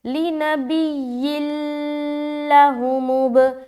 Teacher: ادغام تام کر رہے ہیں بغیر غننے کے ادغام. لِنَبِيٍّ لَهُمُ مطلب یہاں جلدی نکلنا ہے.